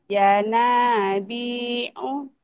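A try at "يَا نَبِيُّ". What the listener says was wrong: ya nabi'a bukan u ya. Ulang.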